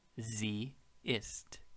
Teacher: the s makes a z sound when a vowel follows it